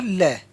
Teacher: ल व्यंजन जो है पार्श्विक है